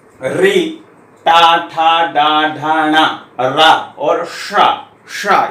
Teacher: टा बोलेंगे तो जीभ लटक करके ऊपर जाके टच होती है, टा वहां पर स्पर्श करती है। ठा वहीं से निकलता, तो जितने भी वर्ण है सब वहीं से निकलेंगे। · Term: मूर्धा